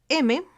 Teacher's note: es nasal oclusivo bilabial y sonoro